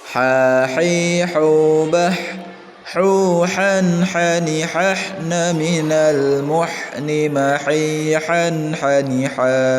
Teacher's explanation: Jadi bah agak ditekan ya, jadi suaranya itu kalau bisa sehalus mungkin. Bah ada anginnya gitu ya, itu lebih bagus, lebih terdengar makhrajnya gitu ya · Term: ha kecil